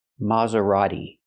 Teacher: the t is not pronounced like t t it's pronounced d d a fast D Maserati not Maserati but Maserati use the fast te this is